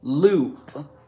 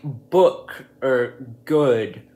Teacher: the double o sound can make the ooh sound in words like Loop but it can also make the uh sound as in words like book or good